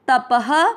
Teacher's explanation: दोनों में अमिक्स होगा तप प में अ की मात्रा तो विसर्ग को पढ़ेंगे ह